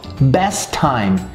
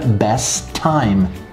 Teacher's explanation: Time também tem esse mesmo som, com o som T de time, mas não é necessário fazer os dois sons. A gente elimina o T, o som do T da primeira, por isso que fica best time. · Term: omissão